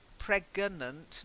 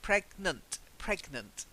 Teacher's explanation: there's no uh between the G and the end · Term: no extra syllable